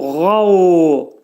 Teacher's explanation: Qa hərfinin məxrəci boğazın yuxarısındadır. Qav. Qalın şəkildə deyəcəyik.